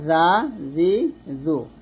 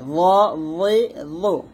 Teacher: জালটা এখানে পাতলা, জা, জি, জু, আর রটা মোটা হবে